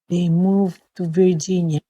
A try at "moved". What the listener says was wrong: Okay, moved. Okay, you have to enunciate for this word when they moved. Okay, I couldn't really hear the D sound, so we need to enunciate that a little bit better when they moved. Okay, remember the D sound is very important. They moved to Virginia.